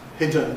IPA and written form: ˈhɪdən (hidden)